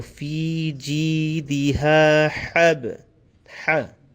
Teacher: So we have to be careful to distinctly pronounce each of them with a different sound. The first one is a ha, small h. Then you have the ha, the coarse or the heavier sound of the H.